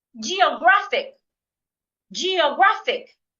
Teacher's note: I'm stressing the third syllable